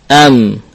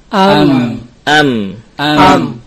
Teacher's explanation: rongga hidung teh kalau kita sukun Huruf ini m kita rasakan Ada shoutun ada suara yang mengalir ke rongga hidung